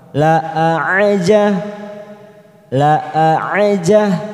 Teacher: huruf ain yang ini sifatnya lebih dalam, lebih ke dalam. La aja, la aja, pendek semua.